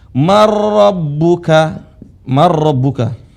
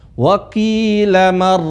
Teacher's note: Karena ada nun bertemu dengan ra, nun lebur. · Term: idgham bila gunnah